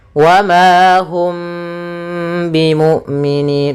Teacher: yaitu mimnya ditahan dulu suara mimnya ditahan gunahnya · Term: Ikhfa Syafawi, ikhfa syafawi